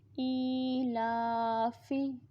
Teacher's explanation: فا حرکات، اس کے اوپر حرکت ہے، فا زیر فی حرکت ہے تو اس کو ہم ایسے ہی پڑھیں گے، نہ لمبا کریں گے نہ جھٹکا دیں گے۔ حمزہ کھڑی زیر ای، لام کھڑی زبر لا، ای لا، فا زیر فی، ای لا فی۔